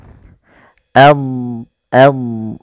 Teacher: Salah satu sifat yang harus diperhatikan Dad itu punya namanya sifat istitalah istitalah yaitu memanjang